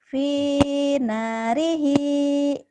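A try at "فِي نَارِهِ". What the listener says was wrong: P-nya panjang, N-nya panjang. Finarihi.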